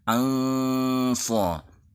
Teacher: Ikhfa yang bertemu sad ini memang agak mirip eng, karena memang sad adalah huruf yang tebal, huruf isti'la. Jadi suara menggema di dalam mulut dengan mengangkat pangkal lidah.